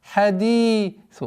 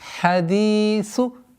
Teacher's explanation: Удлинение в размере двух огласовок кясры. Хадису. С огласовки дамма мы уходим на лям.